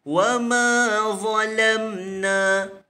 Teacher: Huruf za itu adalah huruf yang tafkhim. Wa ma zalamna, za itu yang ditafkhimkan, adapun lam dinipiskan.